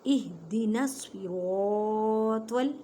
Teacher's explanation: صاد کو موٹا پڑھیں, سین کی آواز نہ آئے